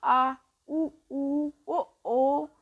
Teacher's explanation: जिन स्वरों के उच्चारण में जीभ के पीछे का हिस्सा उठता है उसे हम पश्च स्वर कहते हैं। अब बोलो, आ, उ, ओ बोले ना, तो इन सब शब्द बोले तो आपको खुद लग रहा है कि आप बोलते समय आपके जीभ के पीछे का हिस्सा उठ रहा है, इसी को हम कहते हैं पश्च स्वर।